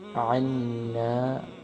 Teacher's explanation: عین کا مخرج گلے سے، عین کو گلے سے ادا کریں گے مڈل سے